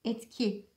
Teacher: En son etkisi kelimesinde etmek fiili gı yapım ekini almış. Ve buradaki T sesinin etkisiyle G sesi sertleşmiş, K'ye dönüşmüş, etki olmuş.